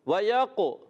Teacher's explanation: قلقلہ بھی قاف میں کرنا ہے